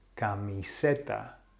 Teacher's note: the emphasis has to be on the second last vowel which is the E